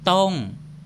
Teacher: Ang salitang ito ay nagsisimula sa consonant na totaw na isang middle class consonant. Mayroon itong tone mark na may to, kaya ang tone na salitang ito ay falling tone.